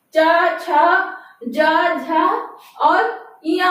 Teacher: ताल से उच्चारित होने वाले वर्ण में चा वर्ग आता है। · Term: तालब